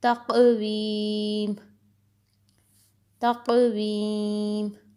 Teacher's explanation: یہاں قاف کو موٹا کر کے پڑھنا ہے اور اس پہ قلقلہ بھی ہوگا